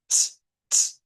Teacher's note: El sonido propio es como la ts, ts, como la T y la S juntas · Eso es lo que vuelve esa dificultad, porque si ustedes se fijan, estamos hablando que nos quedamos, miren, en la misma región. En la región alveolar está la T y está la S. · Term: africado TS